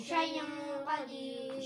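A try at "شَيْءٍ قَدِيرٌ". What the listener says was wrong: शैइन नहीं है, दो ज़ेर है, हमज़ा के नीचे देखें दो ज़ेर है। शैइन कदीर।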